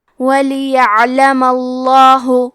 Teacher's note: تو ہمیں حرف اللام کو موٹی آواز میں پڑھنا ہے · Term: تفخیم